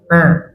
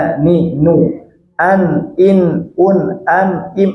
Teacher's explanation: Yakhruju minal khayshum, yang keluar dari rongga hidung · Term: gunnah